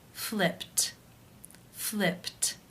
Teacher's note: the final sound of the verb is P which is unvoiced therefore it is case 1 and the ed is pronounced as a tee